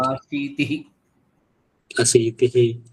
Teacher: यहाँ तिह का जो उच्चारण था तिही हो रहा था, तिह करना है, तिही हो रहा था। तिः बाकी ठीक।